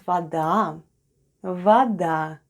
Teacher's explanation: The first sound is v, then we have letter o, which is pronounced as a when unstressed. Then we have d and a. · with a stress on the last syllable. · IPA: /vada/